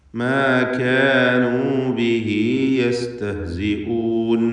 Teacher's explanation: ബിഹി എന്നതിൽ ഉദ്ദമീറിനെ 2 ഹറക്കത്തിൻ്റെ അളവിൽ തബീഇയായ ദീർഘം നൽകണം. മദ്ദുസ്സിലത്ത് സുഗ്റ എന്നായിരിക്കും അതിൻ്റെ പേര്.